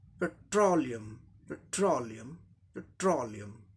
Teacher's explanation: लियम का उच्चारण यहाँ लियम ऐसे हो गया। ठीक उसके पहले सिलेबल ट्रो, ट्रो, ट्रो, इस पे जोड़ देना ट्रो, लास्ट पार्ट के ठीक पहले ट्रो।